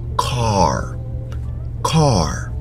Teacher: But in the American accent, you hear the R at the end.